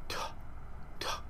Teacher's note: this one is an aspirated T sound that is a t with an with air let out around it